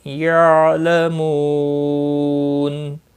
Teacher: اور یعلمو، مو، واو مدہ ہے، ایک الف کے برابر کھینچ کر پڑھیں گے، اور وقف کی صورت میں نون ساکن پڑھا جائے گا، وقف بالاسکان ہوگا۔ مد العارض وقفی ہوگا، 3 سے 5 الف کے برابر کھینچ کر وقف کریں گے۔